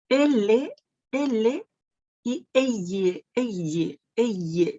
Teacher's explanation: Sientes cómo el aire sale por los costados de nuestra lengua. Por el costado de nuestra lengua. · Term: laterales